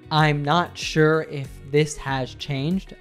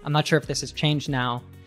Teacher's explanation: I reduced has to the point where it sounds almost like is. I'm not sure if this has changed now, but has and have and also had are reduced when they're used as auxiliaries in the perfect tenses.